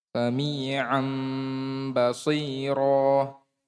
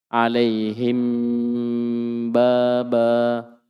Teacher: Jadi ini iklab dan ikhfa syafawi semuanya merapatkan bibir.